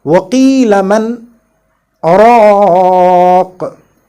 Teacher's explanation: And whenever we see this saktah in the Holy Quran, we have to stop for a very short time without breaking the breath